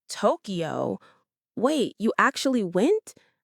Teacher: This fast, excited chain of questions is typical in real conversations. The rising tone communicates emotion as much as the words do.